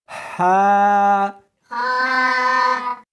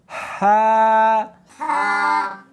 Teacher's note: اس کو حلق میں سے نکالنا ہے اور ساتھ میں ہوا بھی ہونی چاہیے